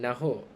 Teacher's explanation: Untuk transkripsi dialek ini, hanya menukarkan K di belakang kepada simbol glotis